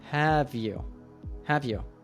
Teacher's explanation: Have and you link completely and almost sound like one word